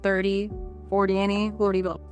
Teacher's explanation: The stress flips entirely. In the tens, the stress is on the first syllable. The temd part is very quick and quiet. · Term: stress pattern